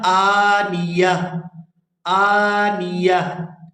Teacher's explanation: یہ جو تا ہے وقف کی صورت میں ہا کے اندر کنورٹ ہو جاتی ہے